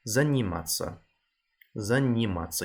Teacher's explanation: You got the soft N in заниматься, but the M for Mike is very hard.